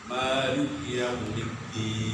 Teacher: menurut Imam Asim dan Imam Kisai harus panjang, 1 alif